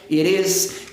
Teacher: Som de R quando você tem um T entre vogais.